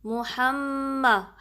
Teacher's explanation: محمد، ہا کو میم سے ملانا ہے، میم پہ بھی جب تشدید آتی ہے تو 2 کاؤنٹ آپ نے غنہ کا ٹائم دینا ہے. ہا کو درمیانے حلق کے حصے سے نکالنا ہے، یعنی محمد نہیں پڑھنا، ہا نہیں، یہ اکسل حلق والا deep part of the throat والا ہا نہیں ہے، یہ ہا ہے، ٹھیک ہے.